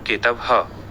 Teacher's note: विसर्ग का हल्का ह उच्चारण